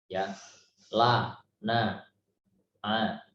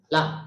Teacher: huruf yang diucapkan tidak terlalu kuat seperti syiddah, tidak terlalu lemah seperti rokhawah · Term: bainiyah